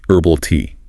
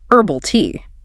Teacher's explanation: If you are focusing on an American English accent, the H in herbal is usually completely silent. We say herbal tea.